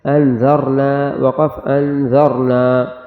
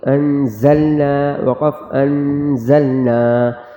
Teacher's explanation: انذرنا پڑھا ہے تو ذال کو نرمی سے پڑھیں گے انذرنا وقف انذرنا. اور اس والے لفظ میں زا ہے جو سختی سے ادا ہوگی انزلنا وقف انزلنا.